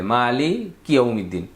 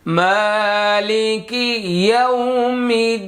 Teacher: এখানে মালিকি আর ইয়াও এটা আলাদা করতে হবে।